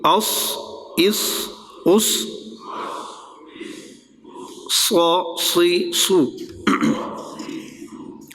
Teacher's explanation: اس اس اس نہیں کرنا، وہ سین ہو جائے گا. صاد ہے تو پر ہو، سیٹی بھی ہو اور پر بھی